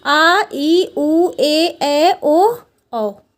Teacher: इन स्वरों का उच्चारण ह्रस्व स्वरों से दुगना समय लेता है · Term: दीर्घ स्वर